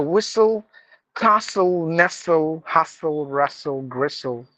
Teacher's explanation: Any word ends with this TLE, we just have to mute the T.